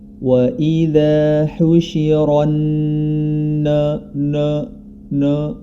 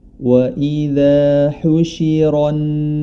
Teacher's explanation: huruf nun tetap dibaca istifal atau tidak tebal